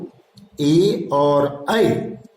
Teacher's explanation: ए और ऐ का उच्चारण स्थान कंठ तालु है। ए अर्थात ओ जोड़ ई और कंठ और ई तालु।